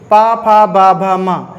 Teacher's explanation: इनको बोलते समय जब हम बोलेंगे पा, फा, बा, भा, मा, तो इसमें काम, पूरा काम किसका होता है, ओष्ठ का होता है, यानी कि होंठों द्वारा ये बोले जाते हैं।